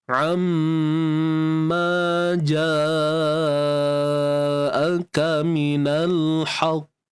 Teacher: pastikan waktu kita lantun tu masih lagi kita mengekalkan sifat isti'la'nya, iaitu terangkat pangkal lidah untuk mendapatkan hasil suara tebal tu. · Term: qalqalah kubra